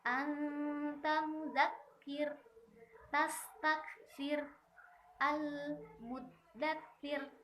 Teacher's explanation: Nah, hati-hati, dilihat dulu di situ ro-nya, ro yang sukunya karena wakof dan sebelumnya adalah kasro, maka harus dibaca tipis ya